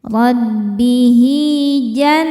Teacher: nun tasydid dihukumi gunnah musyaddadah karena nun bertasydid. Cara bacanya berdengung, tahan dengungannya kurang lebih 2 harokat.